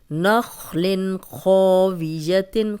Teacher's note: اب دیکھیں تنوین ہے، آگے خو گیا حروف حلقی تو ہم غنہ نہیں کریں گے۔ نخل خاویۃ، خو موٹا بھی ہے اور الف مدہ بھی ہے، لمبا کریں گے۔